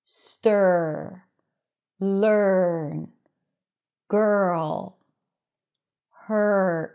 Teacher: We don't add a vowel in between. The r takes over the vowel sound. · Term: R vowel